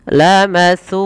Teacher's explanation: maka panjangkan suu sepanjang dua harakat karena ia mad thabi'i